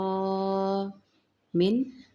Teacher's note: نون ساکن کے بعد حمزہ آ رہی ہے، یہاں پہ اظہار ہوگا